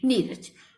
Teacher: तो आप देख सकते हैं प्लस के पहले जो है आधा रा है और प्लस के बाद जो है पूरा रा है, और इस आधे रा से पहले जो हर्ष स्वर है छोटी ई है, तो यहाँ पे जो है जब इसका संधि करेंगे तो ये रा का लोप हो जाएगा और ये छोटी ई की मात्रा दीर्घ होकर बड़ी ई बन जाएगी